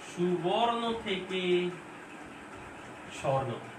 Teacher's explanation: মাঝখান থেকে উটা বাদ পড়ছে, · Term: মধ্য সরলোপ